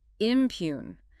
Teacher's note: Two syllables. Stress on the second.